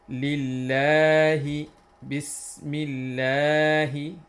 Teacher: the word of Allah should be long and we have to stretch it for two counts